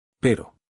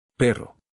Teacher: Listen to the difference between one tap and multiple vibrations.